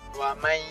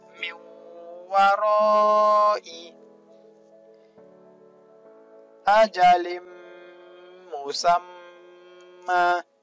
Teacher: Huruf nun mati dileburkan dengan mendengungkannya. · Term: idgham bi gunnah